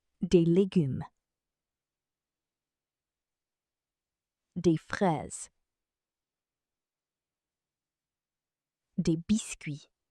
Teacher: Normally, des is pronounced de. The final S is silent.